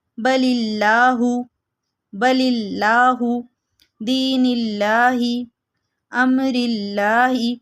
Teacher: اللہ سے پہلے زیر آئے تو اللہ کے لام کو باریک پڑھا جائے گا